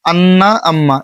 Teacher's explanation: নাকের বাস হতে গুনা উচ্চারিত হয়।